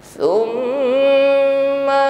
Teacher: mim tasydid ditahan, jangan keburu ya, sempurnakan bunyi dengungnya ya, gunnah musyaddadah